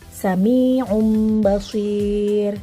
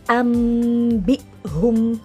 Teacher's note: Iqlab itu artinya ganti. Ingat ya, jika nun atau tanwin bertemu huruf ba, maka suaranya jadi berubah menjadi mim